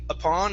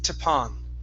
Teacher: we're going to take the T sound here, and instead of it being upon, it's tapon.